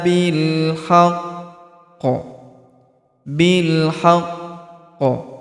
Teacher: Karena kita berhenti di sini maka huruf qi ini kita sukunkan sehingga setelah kita tahan dan kita tekan lalu kita pantulkan